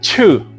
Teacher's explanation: En to, escuchen este sonido aspirado. To. Ya no es lo mismo decir to a to.